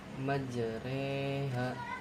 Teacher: Imalah yaitu ee memiringkan harakat fathah ke kasrah sehingga bunyi huruf ro menjadi cenderung lebih ke e.